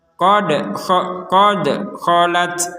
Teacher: Qad sekedar qad, jangan ada de enggak boleh, itu ada de itu enggak boleh. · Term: pantulan